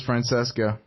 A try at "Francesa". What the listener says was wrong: It's Francesa, guys. The C is silent.